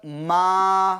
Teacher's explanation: ما میں الف مدہ ہوگا یعنی اس کو ایک الف کے برابر کھینچ کر پڑھیں گے.